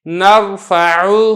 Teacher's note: را ساکن ہے، اس سے پہلے زبر ہے تو اس کو پر کر کے پڑھنا ہے